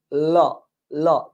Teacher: জিহ্বার দুই পার্শ্ব দিয়ে বের হয়ে যায়, জিহ্বার দুই পার্শ্ব দিয়ে মুখ থেকে বের হয়ে যায়। এন্ড দ্যাট ইজ ওয়াই এটাকে বলা হয় পার্শ্বিক ধ্বনি।